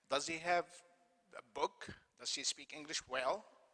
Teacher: the rising intonation indicates a question